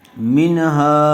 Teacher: نون ساکن کے بعد حروف حلقی میں سے ہا آیا ہوا ہے، اس لیے بغیر گننے کے جلد اظہار کر کے پڑھیں گے۔